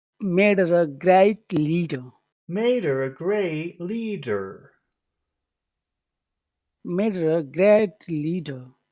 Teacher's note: You just go down at the end with der.